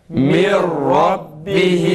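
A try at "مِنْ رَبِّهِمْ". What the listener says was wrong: Yalnız ra tam kalın. Demek ki bunun da okunuşu şu şekilde. Mir rabbihim. Mir rabbihim.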